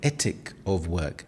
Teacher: The th sound in ethic or with becomes more like a t or duh.